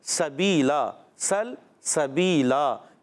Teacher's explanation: سین کو لام سے ملانا ہے، لام کو ہلانا نہیں